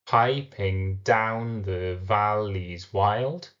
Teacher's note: piping down the valley wild follows the stressed unstressed stressed unstressed meter